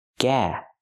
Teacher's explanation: We cannot use the open ah sound like hot and stop. We need the ah sound like black cat.